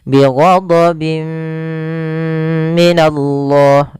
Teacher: Karena bertemu mim tanwinnya dimasukkan itu yang kita namakan dengan idghab. Bigunah disertai dengan gunah masuk ke rongga hidung kita · Bi gunnah disertai dengan gunnah masuk ke rongga hidung kita. Bi ghadabim minallah sambil ditahan 2 harokat. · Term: idgham bighunnaah, idgham bi gunnah